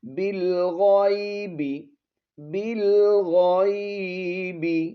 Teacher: لام زیر بل، غین یا زبر غی، با زیر بی، بالغیب، یہاں با کو لام کے ساتھ ملائیں گے، یہ الف جو ہے اس کو ہم نے نہیں پڑھنا